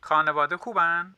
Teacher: I actually hear that at first as like an aspirated ka, like kub, but he's saying khub.